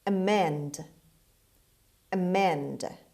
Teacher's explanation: The stress is on the second syllable, on M. Amend means change for the better, correct or change. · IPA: /əˈmend/